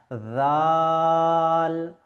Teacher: আচ্ছা, জালের ক্ষেত্রেও আমাদেরকে একটি বিষয় লক্ষ্য রাখতে হবে, যে উপরের দাঁত নিচের যে দাঁত, এই দাঁতের ফাঁকে আমাদেরকে জিহ্বা নিয়ে আসতে হবে। জাল, কোনো সিটির আওয়াজ বার হবে না।